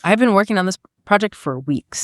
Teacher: I've been naturally contracts and gets unstressed, while the words working, project, and weeks carry the heavy beats of the sentence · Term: stress timing